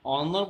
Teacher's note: the consonant h in these words is not pronounced